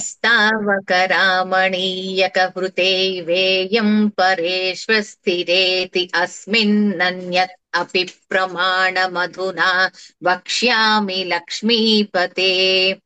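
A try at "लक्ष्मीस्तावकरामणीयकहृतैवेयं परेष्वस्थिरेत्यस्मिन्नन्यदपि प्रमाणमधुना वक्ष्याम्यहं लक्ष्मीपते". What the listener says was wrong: ఇక్కడ ఒక్కసారి అండి, ఇక్కడ సంధి చేయకుండా పదాలు వ్యత్యస్తంగా ఫ్లోలో చెప్పేస్తున్నారు. అంటే లక్ష్మీస్తావకరామణీయక హృతైవేయం పరేష్వస్థిరేత్యస్మిన్నన్యదపి ప్రమాణ మధునా వక్ష్యామి లక్ష్మీపతే. పరేష్వస్థిరేతి అని ఆపితే పర్వాలేదు, కానీ కలిపి చెప్పేయండి ముందర, తర్వాత ఎలాగైనా ఆపుకోవచ్చు. అక్కడే పరేష్వస్థిరేత్యస్మిన్. పరేష్వస్థిరేత్యస్మిన్. అక్కడ కూడా అస్మిన్నన్యద అస్మిన్నన్యద అక్కడ అన్యత్ అపి అంటున్నారు. అన్యద అన్యదపి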